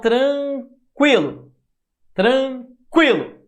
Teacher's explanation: Olha como o I é mais forte. O U quase não sai. Tranquilo. E aí o U é a sua semivogal.